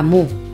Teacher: muy se reduce a mu, para se reduce a pa y casa se reduce a ca. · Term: Reducciones